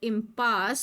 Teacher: They pronounce the word impasse with the stress on the second syllable.